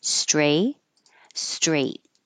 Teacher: just by themselves saying the word you won't hear the final uh T